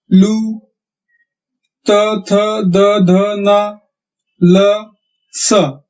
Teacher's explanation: जब हम इन्हें बोलते हैं तब हमारे जीभ की नोक ऊपर के दांतों को जाकर छूती है या लगती है, इसलिए इन्हें दंत्य वर्ण कहते हैं।